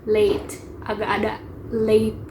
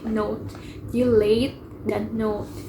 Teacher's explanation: Ada juga glides dalam vowel E dan O. Jadi contohnya dalam kata late terlambat, mereka membacanya late, agak ada late gitu.